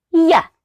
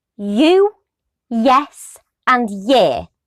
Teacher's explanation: a palatal approximate means that we use the sides of the tongue to create a narrow space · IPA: /j/